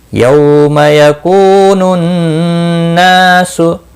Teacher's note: यौम यकूनुन नासु, यौ वाउलिन है, थोड़ा नरमी के साथ खींच कर अदा करेंगे। यकू कू वाउ मद्दा है, 1 अलिफ के बराबर खींच कर पढ़ेंगे।